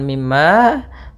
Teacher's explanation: Mim ada bacaan ghunah pada lafal mim yang bertasydid.